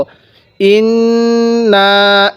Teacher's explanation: এই নুনের মধ্যে গুন্নাহ করব, কারণ মিমে নুনে তাসদিদ গুন্নাহ করা ওয়াজিব। তো নুনের মধ্যে আগে গুন্নাহ করে নিব, তারপরে নুনের মধ্যে টান দিব। ইন্না এরকমভাবে পড়ব।